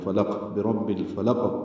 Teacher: فا کو جلدی پڑھنا ہے، لام کو قاف سے ملا دینا ہے، فلق، برب الفلق، قاف ساکن ہے، اس پہ قلقلہ ہوگا۔